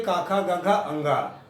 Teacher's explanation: तो आ अक्षर और कवर्ग के का, खा, गा, घा, अंगा तथा हा अक्षर और उसके बाद विसर्ग, इतने अक्षरों का उच्चारण कंठ से होता है। जब हम कुछ बोलते हैं, इन अक्षरों का उच्चारण करते हैं, तो हमारी आवाज जो है कंठ में स्पर्श करती है, टकराती है, तो इन अक्षरों का उच्चारण होता है।